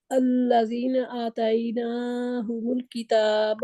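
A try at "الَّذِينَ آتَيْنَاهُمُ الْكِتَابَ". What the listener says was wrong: آتینا آ لمبا ہے نا، آ مد.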